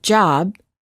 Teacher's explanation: we cannot continue the final B sound we stop the air flow by closing our lips therefore B is a stop